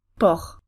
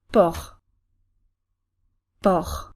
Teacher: The R will make the vowel a bit longer.